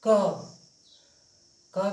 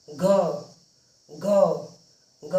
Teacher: स्वर तंत्रिका ज्यादा झंकृत होती है उसे घोष या सघोष कहते हैं